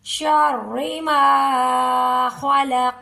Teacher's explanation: नून पर इफा होगा यानी के नाक में छुपाते हुए हम गुना करेंगे नाक में आवाज को रोक के रखेंगे · یہ جو را ہے را کو باریک پڑھیں گے، جب بھی را پر زیر آ جائے گی تو را کو ہم نے پر نہیں کرنا